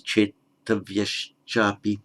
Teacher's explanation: The visarga followed by cha becomes a sh, so chetavya chapi becomes chetavyash chapi.